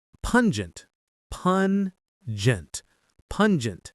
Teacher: The stress is on that first syllable, pun.